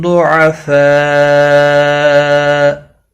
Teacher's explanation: ملانے کی صورت میں مد متصل ہوگا، 4 الف کے برابر کھینچ کر پڑھیں گے